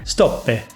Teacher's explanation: yo me reía de su acento italiano por decir stoppe, con una E innecesaria al final